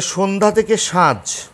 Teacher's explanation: সন্ধ্যা থেকে সাঁঝ, শেষের আটা লুপ্ত হয়েছে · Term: অন্ত স্বরলোপ